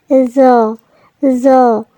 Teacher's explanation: জর উচ্চারণ জিহ্বার আগা সামনের উপরের দুই দাঁতের আগার সাথে লাগিয়ে